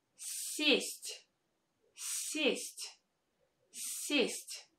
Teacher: In the first word, I pronounce this vowel е as э, with a softened с.